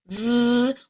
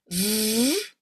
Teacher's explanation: Your teeth will touch your lip VV. We want a voiced vibration here in the throat. V.